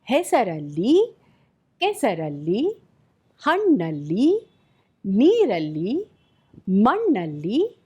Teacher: In such nouns, end u can be dropped before adding alli.